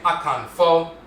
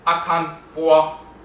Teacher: In the Asante dialect, for example, the Fo has a diphthong, and that's how they pronounce it. So instead of saying Akanfo, they say Akanfo, and it dips.